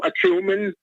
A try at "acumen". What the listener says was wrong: It's acumen. You're putting the emphasis on the wrong syllable. It's pronounced acumen.